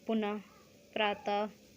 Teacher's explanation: विसर्ग में देख लीजिए इनका ह का साउंड आता है पीछे